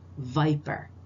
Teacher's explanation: and the V substitution in English the V is voice is a voiced fricative using teeth and lip